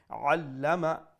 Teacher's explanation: Make sure you pronounce the ain from the middle of the throat.